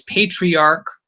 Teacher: even though it's spelled with one I only, you can clearly hear the Y sound as part of the letter, so that it's patriarch.